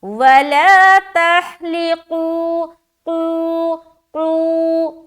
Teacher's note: لیکن قو کو جب کھینچیں گے قاف موٹا رہے گا